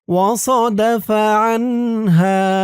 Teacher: হা এক আলিফ টান